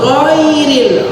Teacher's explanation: yang tebal gha, rilnya tipis. Dan ghain pun tidak boleh dibaca ghairil.